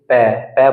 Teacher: हमारे दोनों होठ जो है आपस में एक दूसरे से टच हुए · पै वर्ग को उच्चारण करने के लिए हमको अपने होंठों की सहायता लेनी पड़ती है